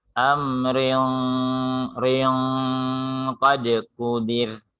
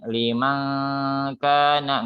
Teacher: ketika tanwin bertemu qaf, hukumnya ikhfa. Pada ikhfa ada sifat gunna, dengung. Maka dengungnya harus menebal.